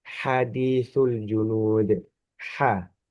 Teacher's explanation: Kalau ha itu dia cenderung ke tenggorokan yang tengah.